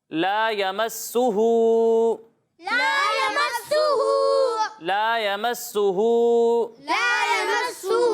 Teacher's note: مد منفصل ہو رہا ہے، تو اسے جو ہے وہ 2 یا 2.5 الف کے برابر کھینچنا